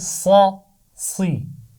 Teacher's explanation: سوئی نہیں پڑھنا اس کو، زیر کے ساتھ آواز کو سیدھا رکھنا ہے جیسے زبر کے ساتھ سیدھا رکھا تھا